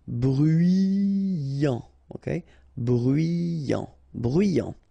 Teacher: Final T not pronounced. So you get bruyant.